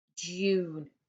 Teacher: So for example, the month of June. It's just making the oo sound here. We can't hear a Y.